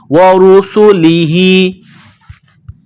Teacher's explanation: है र के ऊपर पेश है र को मोटा करना है सीन में सीटी की आवाज पैदा करेंगे सीन को बारीक करेंगे